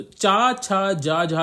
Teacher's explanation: तालव्य व्यंजन होते हैं क्योंकि इसमें जब आप बोलते हैं तो आपका जो जीभ होती है वह आपके तालव्य से टकराती है, ठीक है। तो ये चा, छा, जा, झा जो है आपके तालव्य व्यंजन होते हैं, ठीक है।